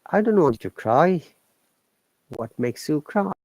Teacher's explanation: diphthong a and I together it sounds like I